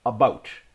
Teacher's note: I don't have that oot and a boot type accent that many Americans hear when they hear Canadian English.